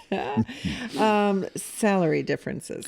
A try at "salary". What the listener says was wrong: making it more like celery.